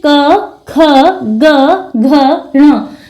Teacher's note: फेफड़ों से निकलने वाली प्राण वायु कंठ को स्पर्श करती इसलिए इन वर्णों का उच्चारण स्थान कंठ होगा अब जब कंठ होगा इनका उच्चारण स्थान तो उसी के आधार · जब हम क वर्ग के वर्णों का उच्चारण करते हैं तो उच्चारण करते समय फेफड़ों से निकलने वाली जो प्राणवायु होती है वो कंठ को स्पर्श करती है।